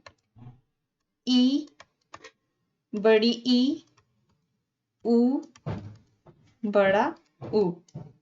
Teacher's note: मुंह लगभग बंद रहता है